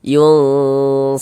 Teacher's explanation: Di bagian yun itu kita tahan sejenak suaranya. Nah, kita panjangkan sepanjang 2 harokat, kita dengungkan. · Bunyi nun sukunnya, jangan dibaca yun begitu, tapi disamarkan. Yunsorun seperti itu. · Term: ikhfa hakiki awsat, ikhfa hakiki